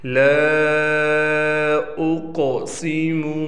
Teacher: لا اقسم، یہاں پر آپ لام کے بعد دیکھ رہے ہیں الف ہے، الف پر چھوٹا سا مد ہونے کی وجہ سے اس لام کو ہم 3 الف کے برابر کھینچ کر پڑھیں گے۔ اس قاف کو ہم نے موٹا بھی پڑھنا ہے، بعض بچے اس کو باریک پڑھ لیتے ہیں، اور اس پر ہم نے قلقلہ بھی کرنا ہے، یعنی آواز کو ہلانا ہے۔